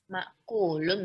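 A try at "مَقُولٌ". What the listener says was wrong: Hamzahnya dari mana asalnya, Om? Jangan ditambah hamzah. Sudah betul, tapi jangan ditambah hamzah. Kan di sini nggak ada hamzah, Om.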